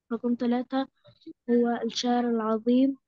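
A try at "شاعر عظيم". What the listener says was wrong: لا، اقرأي صح، اقرأي صح، مفيش فيها ألف ولام. هو شاعر، هو شاعر إيه؟ عظيم.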